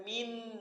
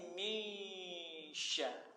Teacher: Nun sukun bertemu dengan huruf shin dengan cara meleburkan atau menyembunyikan bunyi huruf nun, yakni huruf n ke dalam makhraj huruf shin. · Ketika menyebut nunnya sudah siap-siap mau menyebut huruf shinnya. Berarti nunnya tidak jelas lagi bunyinya, samar-samar.